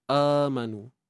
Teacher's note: hamzah yang dibaca dua harakat dan kedudukannya berada di awal kalimah. Dinamakan mad badal.